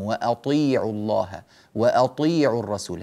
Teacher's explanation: الطاء نعطيها حقها من التفخيم الكامل مع أنها مكسورة، وقد بينا في حروف الاستعلاء من قبل وبينا في حروف الإطباق أن التفخيم يضعف مع الكسر، لكن استثنينا، يعني بينا أن هذا في حروف الاستعلاء غير المطبقة، وأما المطبقة فلا تتأثر بالكسر وتبقى على قوتها في التفخيم.